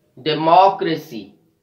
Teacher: We are stressing on the third last syllable in this word. When we have the words that ends with CY, TY, PHY, GY and AL, we stress the third from the last syllable.